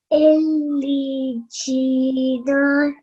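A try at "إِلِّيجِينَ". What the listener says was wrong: We need to make sure that we do produce ya sound over here, and we do press down on the sound because it has shadda on top of it. Illijina.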